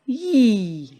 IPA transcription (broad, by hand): j